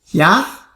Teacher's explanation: Is that going up? Yeah, but it's smooth, quick. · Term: second tone